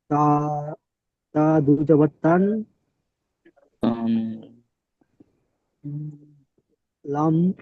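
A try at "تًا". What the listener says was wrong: না, লাম এখানে নেই। তা দু জাবার তান, তা নুন জাবার তান।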